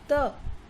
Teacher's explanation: त बोल रहे हैं तो हमारे जो जिह्वा है वो किसको स्पर्श कर रही है, दांतों के पिछले हिस्से को, है ना, पीछे वाले दांतों को स्पर्श कर रही है ना, तो यानी दंत, दंत इसका उच्चारण स्थान हो गया। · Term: दंतव्य